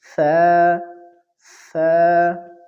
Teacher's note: زبان کی نوک جب ثنایا علیہ یعنی اوپر والے دو دانتوں کے کناروں سے لگ جائے تو اس سے ثا ادا ہوگی